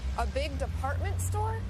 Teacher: raising her voice at the end of a sentence to make sure she understood about the department store